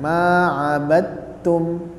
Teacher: karena huruf dal dan huruf ta itu makhrajnya sama, sehingga kita ucapkan ma'abadtum, jangan ma'abadtum, nah, ma'abadtum ya. Jadi dalnya dihilangkan, kemudian kita langsung ke huruf ta-nya, ta tasydid ditahan, ditekan, ma'abadtum ya.